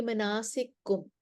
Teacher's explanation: اس میں دو کاف اکٹھے ہو رہے ہیں تو سوسی کو یہاں پہ ادغام کرنا ہے، وہ کہیں گے مناسککم۔